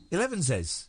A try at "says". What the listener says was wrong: You didn't say says. He says ziz. He's saying ziz again.